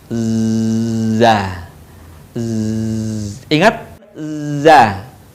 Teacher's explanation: huruf dza dikeluarkan dengan ujung lisan kita hampir di atas dua gigi seri bagian bawah Hai diucapkan dengan mengalir suara tanpa diiringi dengan mengalirnya udara melewati